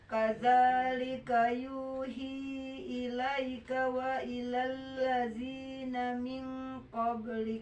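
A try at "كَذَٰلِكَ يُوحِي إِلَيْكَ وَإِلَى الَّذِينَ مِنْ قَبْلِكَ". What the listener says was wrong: Bagus, satu nafas.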